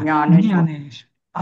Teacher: ज्ञानेश्वर म्हणताना जीभ ही दाताला नव्हे तर दाताच्या टाळूला आधीच्या भागाला लागली पाहिजे